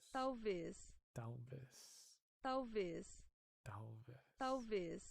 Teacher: You guys really don't pronounce the L, do you?